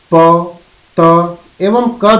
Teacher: वे ध्वनियां जिनके उच्चारण में वायु पूर्ण रूप से अवरुद्ध की जाती है, तत्पश्चात मार्ग अचानक खोल दिया जाता है, जिससे पीछे रुकी हुई वाक ध्वनि तेजी से निकलती है। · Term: स्पर्श ध्वनियों